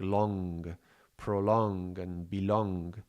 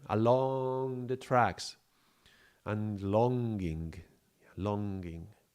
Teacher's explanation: the liquid nasal ending in this voiced and velar sound and it's a long drawn out and contin continuing sound. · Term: liquid nasal sound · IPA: /ŋ/